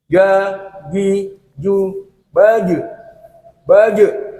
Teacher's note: itu jim pada akhir kalimat karena dipantulkan suaranya, itu karena sifatnya mempunyai sifat kol-kolah. Kol-kolah itu mantul dan harus kuat, ya, mantul.